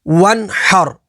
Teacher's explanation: نون ساکن کے بعد ہا ہے، ہا حروف حلقی میں سے ہے تو یہاں پر اظہار ہوگا، یعنی نون ساکن میں غنہ نہیں کریں گے، اور را ساکن سے پہلے زبر ہے تو یہاں پر را کو پر یعنی موٹا پڑھیں گے۔ آگے وقف، ون حر، وقف تام کی وجہ سے ساکن حرف کو چینج نہیں کریں گے۔